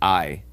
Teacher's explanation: in Latin is the a e we pronounce this I and if you listen very carefully in I you can hear that the a merges with the e